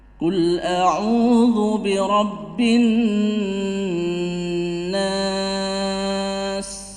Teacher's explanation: Nah, sedangkan di sini bi rabbin nas, an-nas itu alif lam syamsiyah karena ada tasydid. Dan nun tasydid sendiri di sini adalah gunnah. Gunnah yang asli. Jadi panjangnya lebih panjang daripada idgham bi gunnah.